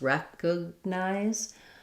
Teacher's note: in recognize, we have first syllable stress, recognize, and it sounds like recognize.